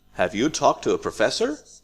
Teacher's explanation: this is a yes no question so we have Rising intonation